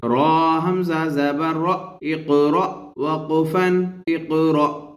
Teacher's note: را حمزہ زبر را، حمزہ پر جزم ہے اس لیے یہ حمزہ ساکن ہوا اور حمزہ ساکن کو جھٹکے کے ساتھ پڑھیں گے